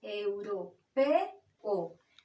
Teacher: Estamos en presencia de dos vocales fuertes o abiertas, la E y la O, que no se pronuncian en una misma sílaba, que se pronuncian separadas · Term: hiato